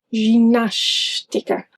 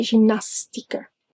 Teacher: S before T sounds like sh.